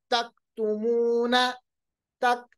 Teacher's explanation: कैफ जो है जब इस पे सुकून होगा तो आवाज को वापस नहीं लाएंगे, आवाज को रोकेंगे। कैसे पढ़ेंगे, अक, इसको अक नहीं पढ़ेंगे, अक, आवाज रोकेगा, अक।